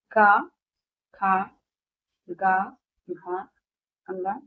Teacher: कंठ से उच्चारित होने वाले अन्य व्यंजन है क ख ग घ अ ग ये सारे क वर्ग के हैं।